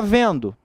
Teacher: na palavra vendo, esse N é símbolo de nasalização